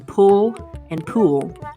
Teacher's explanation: scottish english has no uh sound instead using the oo sound making pull and pool homophones